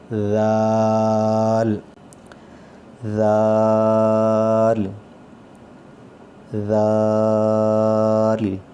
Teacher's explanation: زبان کی نوک, اور دانتوں کے ساتھ, اوپر والے دانتوں کے ساتھ لگ کے تو آواز اس کی نرم آئے گی